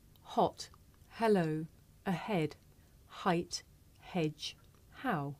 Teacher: this is a voiceless consonant it makes very little sound because it's really just your breath you can hear it at the beginning of the word here